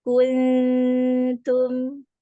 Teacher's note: jangan terlalu kuat untuk huruf ta ada hams di situ